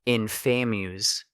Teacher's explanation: Both words are stressed on the first syllable.